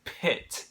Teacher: when you say pit, it's like you're doing a little extra H in there. And that's going to blow if you have a little piece of paper, that little H is going to blow your paper, or you'll feel it on your hands.